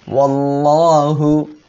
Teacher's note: আল্লাহ শব্দের লাম মোটা করিয়া পড়তে হবে